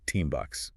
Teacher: the N sound which you make with your tongue changes to an M sound which you make with your lips to get ready for the B sound in bucks which is also made with your lips. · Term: assimilation